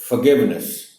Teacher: Forgiveness اور stress جی پر ہے